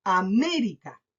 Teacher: marco la palabra en me, pero no en A ni en rica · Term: sílaba tónica